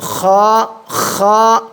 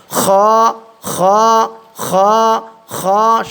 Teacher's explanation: খ পেশ খু, হলকের শেষ ভাগ হইতে উচ্চারণ হয় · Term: খয়ের উচ্চারণ